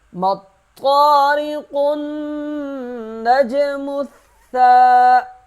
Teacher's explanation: ثا کو سختی سے ادا کریں گے کیونکہ ثا کے اوپر تشدید ہے اور ایک الف کے برابر کھینچیں گے